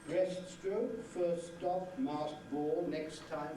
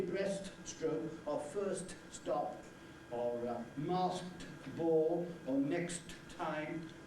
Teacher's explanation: Normally, they do not utter that T so clearly. They certainly don't release it. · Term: elision